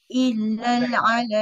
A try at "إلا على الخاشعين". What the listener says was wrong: Eh, bukan illal. Illa sahaja, tak ada lam.